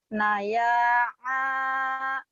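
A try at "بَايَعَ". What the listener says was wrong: Ba bukan na. Ulangin. Baya'a.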